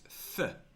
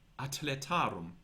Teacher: For example, spelling acletarum with a C for atletarum spelled with a TH, which shows that TH was not pronounced th, but was practically a T, t, an aspirated T